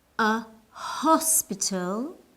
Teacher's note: we use uh because the H in hospital is pronounced